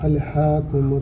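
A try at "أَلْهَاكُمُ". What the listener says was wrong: کریں، الہا الہا ہاں ہاں، تو آپ موٹا کر لیتے ہو، آپ ہاں آپ اور لے جاتے ہو،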